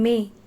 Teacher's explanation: It is in May. It is closed mid front unrounded vowel.